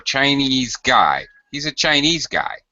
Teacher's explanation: notice how low I go on guy